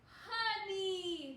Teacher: this O is going to make a schwa sound. It's going lazy.